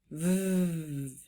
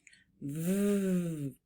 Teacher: The way we make that sound, it's called a labio dental voiced consonant. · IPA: /v/